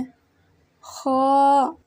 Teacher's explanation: ख्वा की अदायगी में जुबान की जड़ को तालों की तरफ बुलंद करते हुए मोटी आवाज में पढ़ें